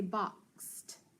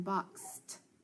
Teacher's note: And that ED, listen, boxed, makes the T sound.